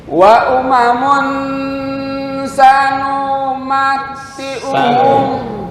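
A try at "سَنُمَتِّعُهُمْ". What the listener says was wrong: Kepanjangan.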